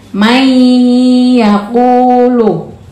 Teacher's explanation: dimasukkan Maksudnya masuk tuh berarti dia masuk ke y-nya May yaquulu Ma sudah masuk ke ya dengan gunah